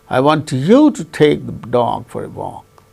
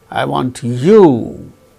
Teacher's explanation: that means falling tone is on you